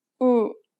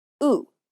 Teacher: The lips are more relaxed for the Korean oo sound than the English oo.